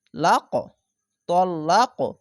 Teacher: এখানে কলকলা হবে ধাক্কা মেরে